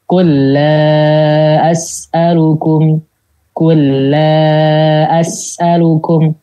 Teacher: Langsung masuk ke lam yang berikutnya. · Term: idgham